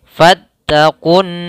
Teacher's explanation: Kemudian di sini ada huruf alif dan nun, yaitu di sini namanya kita namakan dengan alif lam syamsiyah, yaitu alif dan lam yang tidak terbaca tapi tertulis. Langsung ke nun, nunnya kita gunnahkan. Tahan